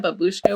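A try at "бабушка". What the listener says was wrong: a babushka. The accent is on the first syllable. Babushka.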